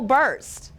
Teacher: the R distorts the vowel sound